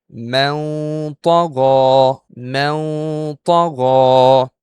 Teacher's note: Okay, Ta is not among the Izhar letters, not among the Idgham letters, and sure it's not the Iqlab letter. So it's an Ikhfaa Haqiqi letter, and this is how we're gonna pronounce it with Ghunnah.